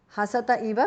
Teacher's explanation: Tarunam divyanam hasatah. The visarga is dropped because of sandhi.